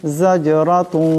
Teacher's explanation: এখানে রার উপর জবর আছে, রাকে মোটা করিয়া পড়তে হবে।